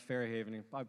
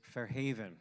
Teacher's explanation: with the accent on the second syllable